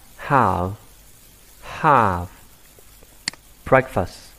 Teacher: Chúng ta có trọng âm số 1 breakfast.